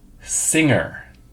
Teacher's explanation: I can see the back of my tongue going up to reach the back of my mouth